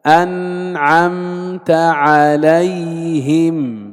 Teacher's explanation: لاحظ كيف نؤدي الإظهار، لا إطالة للغنة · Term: إظهارا شفويا